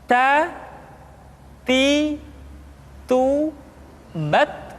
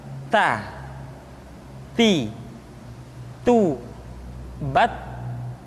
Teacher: Kemudian huruf ta ketika diucapkan terdengar ada nafas yang mengalir, atau dalam ilmu tajwid disebut dengan sifat al-hamas.